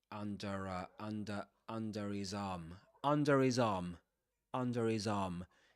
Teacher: the h consonant is usually dropped in words like him, his